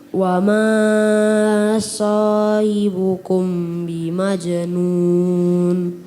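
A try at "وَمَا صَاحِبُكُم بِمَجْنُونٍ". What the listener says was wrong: Diulangi, jangan terlalu panjang. Wa ma sahibukum. Panjangkan lagi, sahibukum bi.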